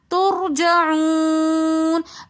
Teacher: ترجعون کے اندر رو ساکن اس سے پہلے پیش ہونے کی وجہ سے رو کو موٹا پڑھیں گے